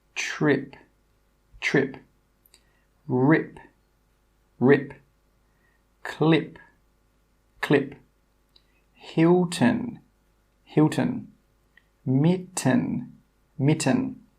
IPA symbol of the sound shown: ɪ